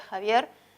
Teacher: este es un fricativo velar